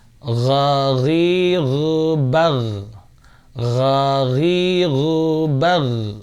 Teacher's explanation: huruf khalqi yang paling atas, yang paling dekat dengan pangkal mulut ya. Paling dekat dengan pangkal mulut di bagian atas ini ya. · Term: ghain